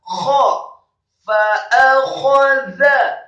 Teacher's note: kho-nya dibaca tafkhim tebal dan serak. Huruf kho bukan hanya tebal atau tafkhim saja, tetapi wajib untuk diserahkan.